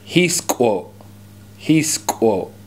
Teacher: The glottal K raised W is like the English K, but with the lips rounded and the back of your throat closed off